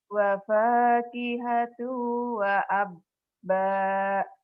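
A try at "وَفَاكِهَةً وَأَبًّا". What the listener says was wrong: kenapa kamu tuh suka domah ya? Wapakihato itu kan wapakihatau. Itu bukan tuh ya. Wafakihatan wa abba.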